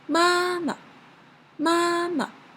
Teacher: the neutral tone the sound is very light and very short